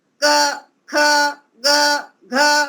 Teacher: क ख ग घ यह सभी हमारे कंठ से आवाज निकलती है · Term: क वर्ग